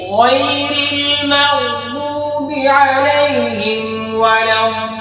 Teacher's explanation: গয়েন উচ্চারণ করার সময় ঠোঁট গোল করা যাবে না, হলকের শেষ হইতে খুব মোটা করে গয়েনটা উচ্চারণ করতে হবে।